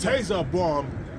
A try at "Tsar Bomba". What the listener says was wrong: Bomba. The T is silent. Tsar Bomba.